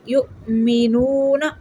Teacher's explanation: واو مدہ ہے، 1 سیکنڈ کے لیے لمبا کریں گے۔